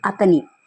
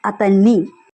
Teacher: you have to stress on syllable ni